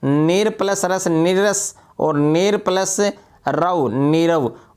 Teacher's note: विसर्ग का र लुप्त हो जाता है तथा पूर्ववर्ती स्वर दीर्घ हो जाता है